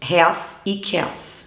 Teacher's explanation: Duas palavras bem interessantes com L mudo são half e calf. Aí vocês precisam prestar atenção na pronúncia que se forma do AL, que é E, tá? E não AL ou EL